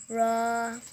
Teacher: জিহ্বার আগার পিঠ তার বরাবর উপরে তালুর সঙ্গে লাগাইয়া